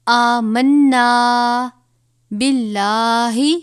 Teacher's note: لام سے پہلے زیر ہے، لام کو باریک پڑھیں گے.